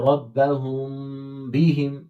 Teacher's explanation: اخفا مانا چھپانا، یعنی صاف میم نہیں پڑھیں گے، اس کی آواز ناک میں چھپائیں گے. ربہم، یعنی میم کی آواز آدھی.